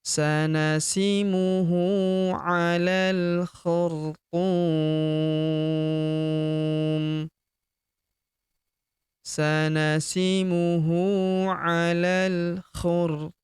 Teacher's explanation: Huruf tu kita panjangkan 2, 4, atau 6 harokat karena di depan huruf tu terdapat waw sukun sebelum huruf pemberhentian dan huruf pemberhentian huruf mi kita sukunkan atau kita matikan.